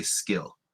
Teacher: that's a unaspirated sound that's an unaspirated K that you're you're saying when you say skill